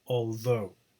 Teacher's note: For example, although, you have a thought vowel, all, and a goat diphthong in though. Okay, but it's although, the stress is on the second syllable